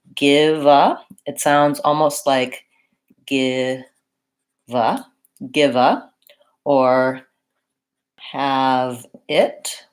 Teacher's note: We link the V to the next word.